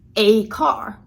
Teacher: So I want you to observe how I stressed a here, and I actually said the full strong form. So instead of a car, a car.